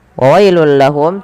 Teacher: Tanwinnya masuk ke huruf lam karena ia idgham bila ghunah. Adanya tanwin bertemu dengan huruf lam.